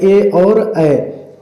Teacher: कंठ और तालु को मिलाकर के बोले जाने वाले वर्ण